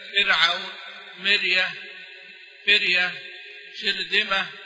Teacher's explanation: إن الراء إذا سكنت بعد كسر فإنها ترقق للقراء السبعة